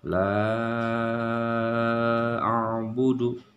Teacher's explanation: Dia dibaca panjang 5 harakat. Contoh la a'budu, panjang ya. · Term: mad jaiz munfasil